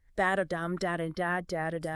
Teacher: That's 10 syllables per line, alternating unstressed and stressed beats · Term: iambic pentameter